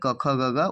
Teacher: जैसे कंठ है तो अ, आ, और कवर्ग जो भी है क, ख, ग, घ वो सारा, और ह ये और विसर्ग ये सब क्या है? कंठ से बोले जाने वाले हैं